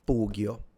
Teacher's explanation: The sword is a pugio with the u being long